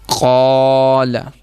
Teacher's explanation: قاف موٹا پڑا ہے تو پھر الف کو بھی ہم موٹا ہی پڑھیں گے اور لام کو باریک پڑھیں گے